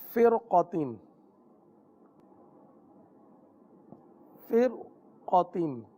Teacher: रा साकिन है, इसके आगे क्या है हर्फ क़ाफ़, क़ाफ़ हुरूफ मुस्तालिया में से, इसलिए रा को पुर पढ़ेंगे